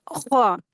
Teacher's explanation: जब ख अदा करेंगे तो हलक से थोड़ी सी सरसराहट के साथ यह लेटर अदा होता है